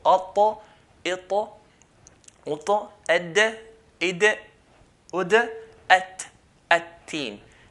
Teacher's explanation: tip of the tongue touches the gum line of the front two teeth